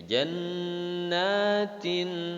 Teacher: Jannah, nun bertasydid dinamakan gunnah. Udah gitu nunnya panjang, yakni mad tabi'i.